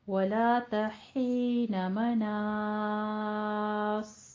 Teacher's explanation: وَلَا تَحِينَ مَنَاصٍ، صاد ہے آخر پہ، اس کو پر کر لیجئے، لیکن کھینچنا آپ نے کتنا ہے؟ الف مدہ کے بعد سکون دے رہے ہیں عارضی طور پہ، سکون عارضی آ رہا ہے، تو آپ نے 6 حرکتوں برابر اس کو لمبا کرنا ہے، کیونکہ یہاں پہ مد ہو رہی ہے مد عارض وقفی.